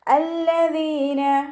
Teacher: ദാലിന് ശേഷം യാമദ്ദ് വന്നു, 2 കൗണ്ട് നീട്ടിക്കൊടുക്കുക. ദാലിൻ്റെ മഖ്റജ് നമ്മുടെ നാവിൻ്റെ അറ്റവും മേലെ മുൻപല്ലിൻ്റെ അറ്റവും ചേർന്നിട്ടാണ് പുറപ്പെടുന്നത്. സൗണ്ട് ദാലായി പോവാതെ ശ്രദ്ധിക്കുക കേട്ടോ.